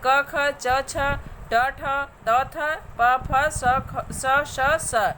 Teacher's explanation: जिन वर्णों के उच्चारण में स्वर यांत्रिका में कंपन नहीं होता है उन्हें अघोष कहा जाता है। जैसे क ख च छ ट ठ त थ प फ स श स 13 अघोष वर्ण हैं।